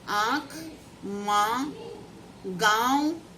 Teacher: अनुनासिक स्वरों के उच्चारण में मुंह से अधिक नाक से बहुत कम सांस निकलती है।